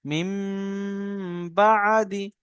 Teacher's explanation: নুন সাকিনের পরে বা এসছে, নুন সাকিনের পরে বা এসছে, নুন সাকিনকে মিম দ্বারা পরিবর্তন করে একালি পরিমাণ গুণনা করে পড়তে হবে।